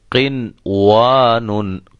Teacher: ہم اس پر ادغام نہیں کریں گے، اظہار کریں گے، ظاہر کر کے پڑھیں گے. نون کو ایسے پڑھیں گے قنوان، قنوان یہ غلط ہوگا.